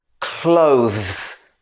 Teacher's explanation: The hardest part is the transition at the end between z and s.